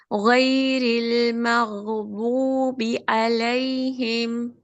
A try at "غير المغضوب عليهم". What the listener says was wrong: Better, good. This was much better. But still, the makhraj for the dad, it can be improved.